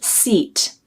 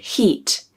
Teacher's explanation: E sound is a tense vowel.